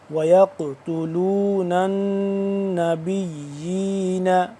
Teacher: وَيَقْتُلُونَ، نون، نون زبر نن، نون زبر نہ، نون یہاں پہ مشدد ہے تو اس پہ ہم غنہ کریں گے